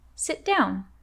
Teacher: Remember to stop the T sound in sit to connect with the word down.